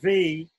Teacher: lips finally says it's made with the teeth and the lips the top teeth touching the bottom lip